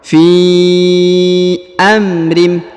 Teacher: huruf fi dipanjangkan 5 harokat karena di depannya terdapat ya, di atasnya terdapat garis panjang 5 harokat